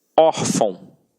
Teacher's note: reparem que a sílaba tônica está na penúltima sílaba. Por isso é uma paroxítona.